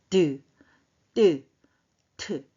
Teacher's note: 혀끝이 윗잇몸 뒤에다가 잠시 막았다 터트려요.